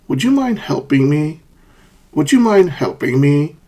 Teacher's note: Helping, falling, me, rising. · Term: fall-rise intonation